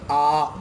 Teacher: विवृत स्वर के उच्चारण में पूरा मुंह खुल जाता है, यानी जब इनको हम बोलते हैं तो मुंह ऐसा लगता है जैसे पूरा खुल गया हो।